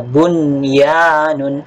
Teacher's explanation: nun sakinah bertemu dengan ya, dan masih terbaca dengan jelas. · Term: izhar wajib